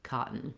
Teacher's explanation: h uh i put the stop t in um parentheses because we are making that t but you're not going to hear that burst of air